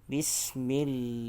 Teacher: lam pada kalimah Allah ini juga perlu dibaca dengan kadar 2 harakat panjangnya · Dan pada kalimah lam ini, adapun kalimah lafzul jalalah, kalimah Allah ini ada hukum lam yang dibaca dengan nipis ataupun tarqiq, kerana sebelum kalimah Allah huruf mim adalah berbaris kasrah.